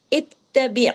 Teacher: ता डबल है। बारीक है तशदीद के साथ है। बा ऐन ज़ेर बी ऐन की आवाज गले में जमाऊ के साथ आनी चाहिए क्योंकि ऐन यहां जजम के साथ है। · عین کی آواز گلے میں جماؤ کے ساتھ آنی چاہیے کیونکہ عین یہاں جزم کے ساتھ ہے · اس میں دیکھیے تا ڈبل ہے، باریک ہے، تشدید کے ساتھ ہے